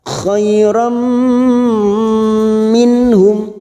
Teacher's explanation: Khairam, ram ada fathah tanwin yang bertemu mim idgham bigunnah, siap masuk dan mendengung masuk ke huruf mim, namanya bacaan idgham bigunnah, siap masuk dan mendengung masuk ke huruf mim dan ditahan selama 3 harokat